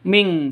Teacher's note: Makanya bacanya ming seperti itu, khusus qaf dan kaf. Jadi khusus qaf dan kaf cara bacanya ditambah dengan ng, makanya dibaca ming seperti itu.